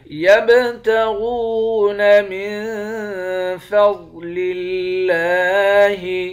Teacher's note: نون پر اخفا کریں گے، ضاد کو موٹا پڑھیں گے · با پہ قلقلہ کریں گے، غین کو موٹا پڑھیں گے، واو کے ساتھ ملا کر ایک الف کے مقدار کھینچ کر پڑھیں گے، واو حروف مدہ ہے۔